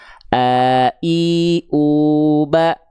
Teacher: hamzah itu dilafalkan dari tenggorokan paling dalam. Di sinilah kurang lebih paling pangkal.